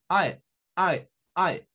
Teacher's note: un sonido que mezcla la A con la E, pero en un solo movimiento. Normalmente la A nosotros la hacemos con la mandíbula abierta.